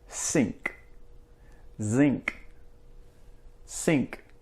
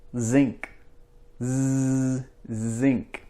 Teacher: when you say s the air comes down a little bit when you say Z there's not as much air